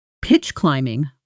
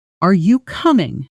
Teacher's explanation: And a third pattern, this one about rising and falling intonation rather than blending. In a genuine yes or no question, the voice rises at the end. Are you coming?